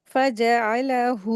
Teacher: यहाँ पर हा के ऊपर उल्टा पेश है तो इसको दो हरकत खींचेंगे, बाकी इन 4 लेटर को जल्दी पढ़ेंगे।